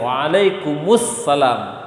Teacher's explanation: Mim sukun asli bertemu dengan hamzah wasol menjadi mu dia.